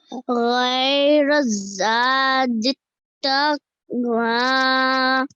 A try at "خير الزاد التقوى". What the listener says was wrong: This first letter, this is a kha, not a gha. خير الزاد التقوى. التقوى.